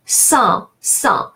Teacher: AN, when is at the end of the word or followed by a consonant, is pronounced nasal A, sans, sans. And the final S as the final consonant is silent.